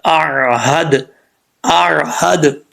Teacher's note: اب دال میں جو ہے قلقلہ ہے، کیونکہ یہ حروف قلقلہ میں سے اور ساکن ہے تو قلقلہ ہو رہا ہے